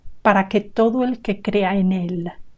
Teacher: There should never be a gap between en and el.